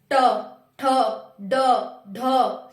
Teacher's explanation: हमारी जीभ ऊपर जा रही है और फिर थोड़ा सा टर्न हो रही है, पीछे जाके लग रही है मूर्धा पे। हमारा मूर्धा कहाँ होता है, तालु के बिल्कुल ऊपर पीछे की साइड, तो ये मूर्धा होता है।